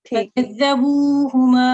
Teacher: ये हु लंबा ना हो, हरकात मुख्तसरा में से है, 1 सेकंड के लिए इसको पढ़ेंगे